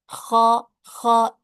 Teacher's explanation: kalau huruf kha itu justru harus mendorong udara dari dalam tenggorokan. Atau bahasa mudahnya mungkin agak mengeluarkan suara ngorok sedikit.